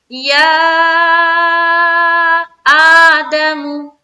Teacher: یا کے اوپر دیکھیں مد ہے، 3 سے 4 الف کی مقدار کھینچیں گے